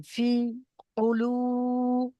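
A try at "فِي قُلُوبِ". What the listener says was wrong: না, কু টান দেবেন না।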